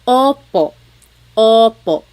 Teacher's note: Sometimes I think of it like having a ball in your mouth. Your tongue gets kind of pushed back and down a little bit and the inside of your mouth is open and wide. So O like OP O.